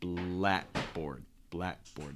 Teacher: And notice that it's not going to be blackboard, it's blackboard. So you're not pronouncing that breath in between the K and the B. Okay, you want to hold the breath and then release on the B.